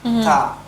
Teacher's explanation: Ta itu hanya yang dominannya desisnya. Jadi ketika mengucapkan ta itu dia anginnya keluar, ada desisannya